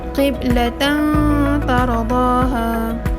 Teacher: apabila tanwin bertemu dengan ta, cara bacaannya juga ialah didengungkan 2 harakat. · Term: ikhfa hakiki